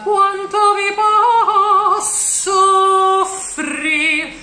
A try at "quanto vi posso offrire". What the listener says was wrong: Make the two O's. Posso offrire. Keep it a little longer because otherwise we will get soffrir as in suffer.